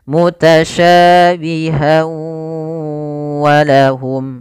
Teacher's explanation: Idgham disertai dengan gunnah, maka masukkan tanwin pada huruf ha, masuk kepada huruf waw dan ditahan suara wawnya. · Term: idgham bi gunnah